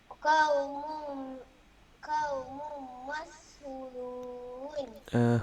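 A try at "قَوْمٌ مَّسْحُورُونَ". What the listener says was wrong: Hu panjang tau.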